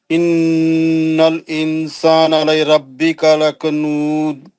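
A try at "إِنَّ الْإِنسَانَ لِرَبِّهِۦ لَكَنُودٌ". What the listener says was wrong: ربی کا نہیں ہے،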